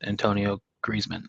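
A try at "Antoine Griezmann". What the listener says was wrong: You said Antonio. Antoine. He's French.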